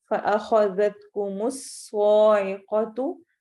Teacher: جہروتا فأخذتكم الصاعقة، جہروتن را موٹے حروف میں سے موٹا پڑھا جائے گا یہاں پر، جہروتن یہاں پر بھی ہم نون کو چھپائیں گے، فأخذتكم الصاعقة صاد کو موٹا پڑھا جائے گا